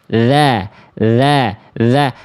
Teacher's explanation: huruf dalal itu ujung lidah bertemu dengan ujung gigi atas